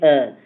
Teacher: सिर्फ अ होता है यानी कि जब हम बोलेंगे तो जीभ के बीच हिस्से में जब अ बोलोगे अ तो ऐसा लगेगा कि जीभ के बीचों बीच हिस्से से बोला जा रहा है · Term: मध्य स्वर